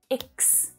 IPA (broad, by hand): ɪks